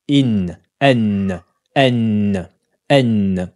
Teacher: elle se prononce avec le bout de la langue qui rentre en contact avec le début du palais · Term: la lettre noun